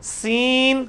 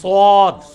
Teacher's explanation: سین کا مخرج اور سواد کا مخرج ایک ہے, صرف اس کو موٹا کر کے پڑھنا ہے. اس میں بھی سیٹی کی آواز آئے گی.